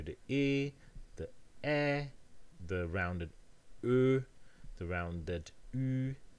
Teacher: all of these vowels are front vowels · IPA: ɪ ε ø y: